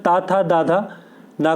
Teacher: जो तावर्ग होता है वो दंत से उच्चारित होता है। इनमें उच्चारण के समय जो वायु है वो दांतों को स्पर्श करती हुई बाहर निकलती है।